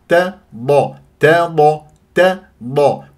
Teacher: تفخم التا لمجاورتها للضاد المفخمه مرتبه ثانيه